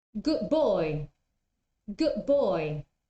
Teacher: the D is not articulated again the tongue goes to that position to that position of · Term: assimilation